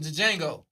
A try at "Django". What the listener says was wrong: It's Django. The D is silent. The D is silent.